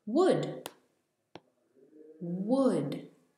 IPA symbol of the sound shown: wʊd